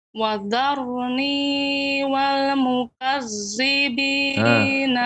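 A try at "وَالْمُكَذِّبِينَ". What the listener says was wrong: Yang wal mukazzibi ke zai tadi lebih banyaknya. Wal mukazzibi yang benar wal mukazzibi za. Punggung ujung lidah mengenai gigi seri atas. Jadi harus dibedakan ya Ibu antara za, coba ucapkan za dengan dengan za.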